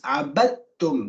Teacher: The dal completely becomes the ta. Then you see there's nothing on the dal and there's a shadda on the ta.